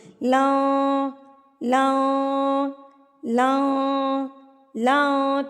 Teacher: اس کو آپ نے 3 حرکات کے برابر کھینچ کے یعنی کہ لمبا کر کے پڑھنا ہے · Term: مد منفصل چھوٹی مد